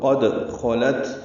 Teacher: قد خلت خا پر پڑھیں گے، لام باریک پڑھیں گے، تا بھی باریک پڑھیں گے اور اس پہ ہمس ہوگا